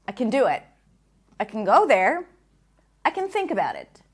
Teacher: what you hear is a very short small sound between the C sound and the N